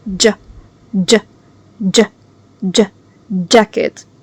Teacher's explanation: So the J sound is not like measure and it's also not ch like chair.